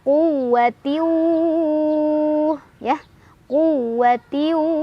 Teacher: Karena ada tanwin kasrah bertemu dengan huruf waw. Cara bacanya, tanwinnya masukkan ke huruf waw sambil berdengung. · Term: idgham bi gunnah